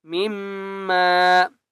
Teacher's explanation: میم کے اوپر تشدید ہے، غنہ کریں گے